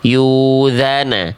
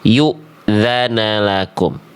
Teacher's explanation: Bacaan hamzah sukunnya tidak jadi ain dan dia sifatnya tertahan suaranya.